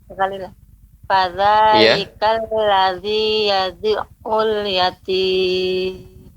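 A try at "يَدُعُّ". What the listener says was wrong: Ya, masih terasa yadu'ul, ya. Kan tapi dia lebih dilembutkan. Yadu'ul. Dia tidak terputus. Tinggal catatannya tadi ini pengucapan ain, ya. Ain yang bertasydid, dia tidak berhenti suaranya. Yadu'ul, ya. Yang kurang tepat yadu berhenti. Yadu'ul itu berhenti. Yang benar dia bersambung. Yadu'ul.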